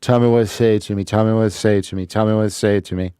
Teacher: the first you is missing